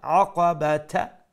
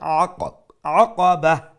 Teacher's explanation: Aqaba ayn, middle of the throat, and at the end if we stop then the round ta will become a ha. However, if you continue, you can continue, then it will be the exactly same aqabata, like that.